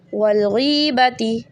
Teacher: ज़ेर के बाद या साकिन से 3 सेकेंड स्ट्रेच।